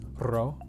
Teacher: ro is a double r or a rolled r it's a short rolled r